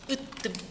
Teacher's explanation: 지금 모음 사이에서 갑자기 된소리가 나고 있죠. 원래는 된소리가 날 이유가 전혀 없습니다.